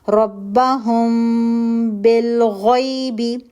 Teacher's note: गुना करके फिर बा के लिए अपने होठों को दबाएं · آپ نے پیپر تھن گیپ کرنا ہے، 2 کاؤنٹ کا غنہ کرنا ہے. ربهم بالغیب، غنہ کر کے پھر با کے لیے اپنے ہونٹوں کو دبائیں. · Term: اخفاء شفوی